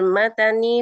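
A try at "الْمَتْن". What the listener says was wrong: minal matni, taknya disukun minal matni lam ada lamnya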